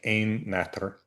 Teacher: So a compound like ein natr, one night old, that first syllable, ein, is what bears the primary stress. There's a secondary stress on natr, the second element of the compound, but that doesn't count as a full lift.